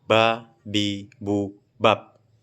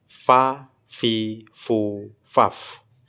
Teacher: huruf fa mengeluarkan desis sehingga tidak bisa disebut sebagai sifat huruf jahr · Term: hams